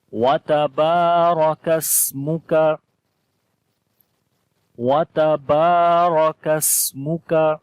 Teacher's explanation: با کو لمبا کریں گے، الف مدہ ہے، الف سے پہلے زبر آ گئی ہے، را کو موٹا پڑھیں گے